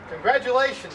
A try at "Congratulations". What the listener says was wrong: Did you say it's a G? Congratulations, it's a G. It's not a T or a D, it's a G. C-O-N-G, adulations.